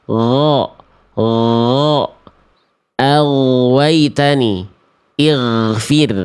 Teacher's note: Jahr itu udara atau nafas kita tertahan tidak mengalir. Yang mengalir pada huruf gin hanya suara saja